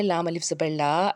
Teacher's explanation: الف سے پیچھے زبر ہے، ایک الف کے برابر کھینچ کے ادا کیا